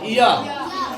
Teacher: अर्ध स्वर में देखो ये या का उच्चारण तालु, बोल के देखेंगे या हम जब बोल रहे तो हमारा जीभ का देखो बीच वाला भाग ऊपर तालु में सटेगा। या सटता बीच वाला भाग जीभ का, ये आगे का पोर्शन नहीं, बीच का पोर्शन देखो।